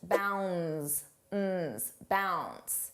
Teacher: Notice how bounds the D is not pronounced.